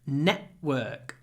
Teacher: if you can learn to say it with a glottal stop, network, network, network, you'll sound really natural